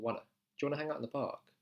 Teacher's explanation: the park I'm doing this really interesting thing where I'm saying I'm not saying do you I'm saying Jew Jew kind of like a J sound and then one so I'm changing one to two wanna join